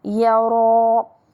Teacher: ما يرى مد طبيعي والراء مفخمة. وننتبه الياء مرققة لكن الراء مفخمة